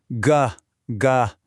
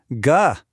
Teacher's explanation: G makes a sound way back in your throat